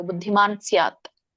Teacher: ಅಲ್ಲಿ ಪ್ರಭುಜಿ ಬುದ್ಧಿಮಾನ ಸ್ಯಾತ, ಮಾನ ನ ಸ್ವರ ಕೂಡ್ಸಂಗ್ ಇಲ್ಲ, ಗ್ಯಾಪ್ ಕೊಡಂಗಿಲ್ಲ ಅಲ್ಲಿ. ನ ವ್ಯಂಜನ ಇದೆಯಲ್ಲ, ಹಾಗಾಗಿ ನಕ್ಕೆ ಸ ಒತ್ತಿದ್ದಾಗೆ ಹೇಳ್ಬೇಕು. ಬುದ್ಧಿಮಾನ್ ಸ್ಯಾತ್.